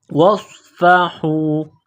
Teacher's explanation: صاد میں سیٹی کی آواز پیدا کرنی ہے، صاد کو موٹا کرنا ہے